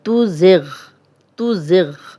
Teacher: आगे है ला तुज़िग़, तुज़िग़, ला अलिफ मद्दा है, खाली अलिफ, लाम पे ज़बर और तुज़िग़, ज़ा सीटी वाला है और गाइन पे जज़म है, तो ज़िग़, इसको मोटा पढ़ेंगे गाइन को।